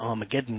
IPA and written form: ˌɑrməˈɡɛdᵊn (Armageddon)